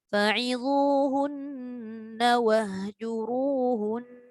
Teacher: Kalau kita waqaf, dia tetap ada 2 harakat dengung tu. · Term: gunnah